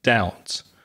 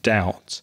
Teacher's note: of the pronunciation of Doubt because it has a silent letter there's a silent B in doubt d o u BT but we don't pronounce it